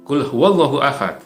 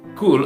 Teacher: di pangkal tenggorokan yang agar lebih dalam itu huruf qaf kemudian huruf Kaf adalah huruf yang keluarnya dari lebih maju lagi